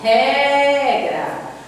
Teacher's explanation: Então aqui a sílaba tônica é o ré. O ré é a penúltima sílaba, última, penúltima.